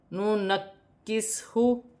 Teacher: کاف باریک بھی ہے اور مشدد بھی ہے